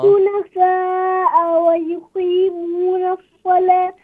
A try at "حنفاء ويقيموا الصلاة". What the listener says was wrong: حنفاء ويقيموا الصلاة. نون.